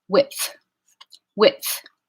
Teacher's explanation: it has a D in the spelling, but not in the pronunciation. Because it goes to a voiceless fricative, we're just going to take the voicing right off that D